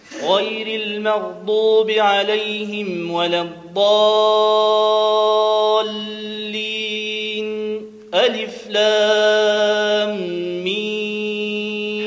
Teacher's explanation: وسكتهم المختار دون تنفس. سكت بنفس النفس اللي خديته، تعمل سكتة بدون تنفس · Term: السكت